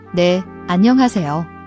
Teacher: an-ha is often aspirated, like a soft H sound where you breathe out. Don't make it a harsh H.